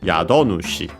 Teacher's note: And so literally Yado Nushi, accented in this case on the do, Yado Nushi.